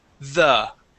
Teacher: The voiced TH is in words like the. Okay, and it has a vibration here.